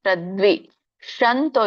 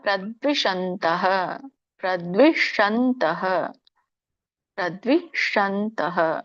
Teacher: ಶ ನಿಮ್ಮ ನಾಲಿಗೆ ಹೊಳ್ಳುವಾಗ ಅಂಗಳಕ್ಕೆ ಹತ್ತಬೇಕು